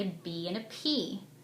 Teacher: a b and a p are both made at the lips they're both made in the same way the only difference is that with the b the voice box